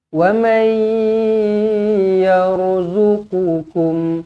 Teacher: Nun kosong bertemu dengan ya idgham ma'al gunnah dengungkan dua harakat senyum. Jumpa dengan ya kena senyum supaya kita masuk ke dalam huruf ya.